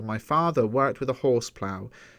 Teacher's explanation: a line of eight syllables with alternate unstressed and stress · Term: iambic tetrameter